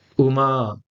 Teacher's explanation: in Uma, U will be the short vowel and the ending A will be the long vowel